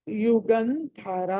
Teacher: అక్కడ యుగంధరాలో ధ మహాప్రాణము ఒత్తి పలకాలి.